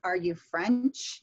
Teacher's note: Rising intonation we use with yes no questions